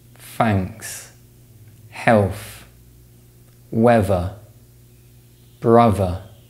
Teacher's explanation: some accents prefer to front the TH sounds.